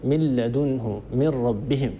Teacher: نجد أن الجزء اللساني من هذه النون الساكنة معدوم، من لدنه لم يبقى أثر لهذه النون، كذلك الجزء الخيشومي من النون هو معدوم هنا غير موجود تماما، من لدنه من ربهم. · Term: الإدغام